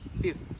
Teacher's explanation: The careful pronunciation is fifths, but most speakers say fifths. The sound theta is dropped because it is difficult to pronounce two fricative sounds, F and theta, next to each other. This change makes the word easier and faster to pronounce. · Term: dissimilation